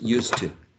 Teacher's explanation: But if you use it with preposition to, used to, this is also going to affect the previous sound. So this z, which is voiced, will become devoiced, will be s. So used becomes used to, because of the influence of the following voiceless t. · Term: devoicing